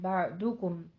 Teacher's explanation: बादाकुम नहीं है, बादुकुम है, होंठों को गोल कीजिए, दौद के ऊपर जमा है, बादुकुम, फिर आगे मीम साकिन का कायदा इजहार शफी, और अला बा, यहाँ पे आइन भी साकिन और दौद भी साकिन हो जाएगा।